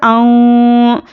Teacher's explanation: हमज़ा नून ज़बर आऊं, नून साकिन के बाद हुर्फ़े इख्फ़ा आया है तो नून की आवाज़ को नाक में छुपा कर पढ़ेंगे और इख्फ़ा की मिक़दार 1 अलिफ के बराबर है